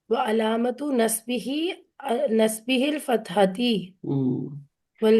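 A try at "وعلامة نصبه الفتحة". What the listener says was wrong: नहीं ऐसे। हाँ, नस्बी ही अल फतहतु, ये अलग है, इसको नहीं जोड़ना उसके साथ, ठीक है। देखिए ना, यार फिर जर तो नहीं है ना जो आप जेर दे रही हैं यहाँ पे।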